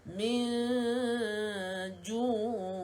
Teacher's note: Nun kosong bertemu dengan jim dengung 2 harakat, renggangkan bibir. Okey, hukum dia ikhfa hakiki, renggangkan bibirnya.